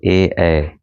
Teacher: कंठ और तालु से उच्चारण होने वाले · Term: कंठ तालव्य